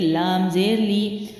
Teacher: لام باریک ہے، پڑی حرکت ہے، جلدی چھوڑیں گے